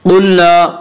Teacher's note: क़ाफ को पुर पढ़ेंगे। क़ाफ हुरूफ़ मुस्तालिया में से है।